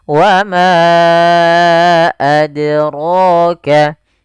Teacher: Rohnya tebal, 2 harakat mad tabi'i.